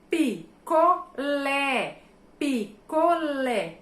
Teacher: a minha sílaba tônica está na última, então é uma oxítona